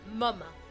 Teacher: Mama is a lower. It's less, there's almost no nose resonance, and it's more in the jaw and maybe in the chest more.